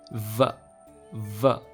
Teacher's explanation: English वाले V का sound व का नाम होता है labiodental fricative, यानी कि इसको प्रोनाउंस करने के लिए आपके दांत आपके होठ से टच करने चाहिए और फिर आपको एक फोर्स्ड साउंड प्रोड्यूस करना चाहिए।